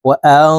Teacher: এই নুন সাকিনকে নাকের ভিতরে লুকাইয়া গুন্নার সহিত পড়বো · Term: ইকফাহ গুন্না